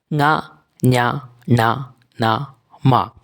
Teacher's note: മൂക്കിലൂടെ ശ്വാസവായുവിനെ വിട്ടുകൊണ്ട് ഉച്ചരിക്കുന്ന വർണ്ണത്തെ അനുനാസികം എന്ന പേരിൽ അറിയപ്പെടുന്നു · വായുവിനെ പുറത്തേക്ക് വിടുന്നത് അങ്ങനെ അപ്രകാരം മൂക്കിലൂടെ പുറത്തേക്ക് വിട്ട് കണ്ഡരന്തരം എല്ലാം ചുരുക്കി മൂക്കിലൂടെ ശ്വാസം പുറത്തേക്ക് വിട്ടുകൊണ്ട് ഉച്ചരിക്കുന്ന അക്ഷരങ്ങൾ